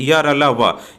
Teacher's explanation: श्वास अर्थात प्राण वायु की मात्रा कम होती है उन्हें अल्प प्राण कहते हैं, अर्थात इनके उच्चारण में कम समय लगता है।